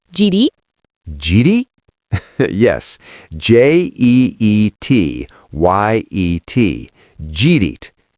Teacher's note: did you eat yet, smashed together by a hurried American